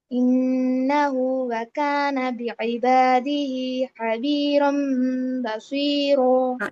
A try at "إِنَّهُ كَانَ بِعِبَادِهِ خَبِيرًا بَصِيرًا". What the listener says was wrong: إنه وكان نہیں کرنا، ٹھیک ہے؟ إنه یہ جو چھوٹی سی واو ہے نا، بس یہ نہو جو ہو کو لمبا کرنا ہے یہ وہ ہے، وکانا نہیں ہے، إنه كان کیسے؟